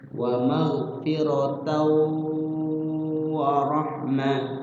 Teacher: Jadi wawunya bertasydid di situ, tandanya idgham bi gunnah.